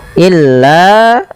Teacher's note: Illa mad tabi'i, panjangkan 2 harakat.